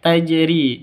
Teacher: jimnya hurufnya qalqalah sudah memenuhi syarat yaitu sukun ya jadi ini bacaan qalqalah